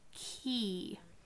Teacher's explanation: Key. Your tongue actually comes forward a little bit because of the E sound, key.